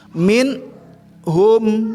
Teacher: minhum nun bertemu sama ha. Ya, ini tidak boleh dibaca dengung ya, karena hanya ini adalah huruf al-halqu, huruf al-izhar. Jelas. Jadi minnya itu jelasnya itu dengan adanya huruf ha. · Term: huruf izhar